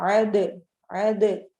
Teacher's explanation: दाल पे कलकला हो रहा है, दाल साकिन है